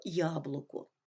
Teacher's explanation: у слові яблуко перший склад наголошений другий і третій склади не наголошені